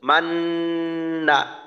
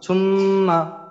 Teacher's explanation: শুধুমাত্র নুনের গুন্নাটা লম্বা হবে, আর বাকি যে মিম জবর মা, নুন জবর না, এই দুইটা অংশ কিন্তু একটুও লম্বা হবে না। মান না, না দ্রুত শেষ করতে হবে, কারণ এখানে ওই জি টান জি।